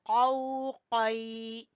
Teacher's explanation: क़ाफ को ज़बान की जड़ से